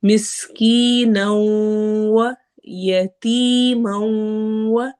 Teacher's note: مسکینا، مس سین میں سٹی والی آواز آئے گی، کی میں یا مدہ ہو رہا ہے، نو تنوین جو نون کی تنوین ہے اس کو واو سے ملانا ہے، ہونٹ گول کرنے ہیں